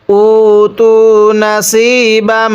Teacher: গুন্নাহ করব, কারণ মিমে নুনে তাজদিদ গুন্নাহ করা ওয়াজিব। মিমের উপর তাজদিদ থাকলে অবশ্যই গুন্নাহ করে পড়তে হবে।